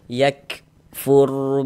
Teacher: huruf ra sukunnya dibaca tebal dibaca tabkhim. Sehingganya pangkal lidah kita itu naik terangkat ke atas ketika kita mengucapkannya. Ditebalkan huruf rnya yakfur bi a dibaca panjang.